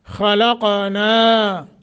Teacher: نون کے آگے الف ہے ایک الف کے برابر مد